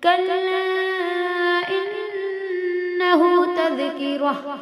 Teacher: ان کے نون پہ تشدید ہے، غنہ ہوگا